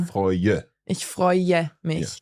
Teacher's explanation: So there you've got oi and then an E sound afterwards.